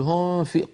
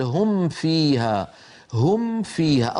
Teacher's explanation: أظهر الميم واحذر أن تخفيها